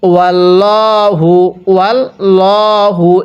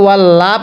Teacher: আলা শাইইম মিম্মা কাসাবু, এরপরে ওয়াল্লাহু, ওয়াল্লাহু, এটাকে ওয়াল্লা পড়া যাবে না, কারণ আল্লাহ শব্দের পূর্বে জবর থাকলে এই আল্লাহ শব্দটিকে মোটা করে পড়তে হবে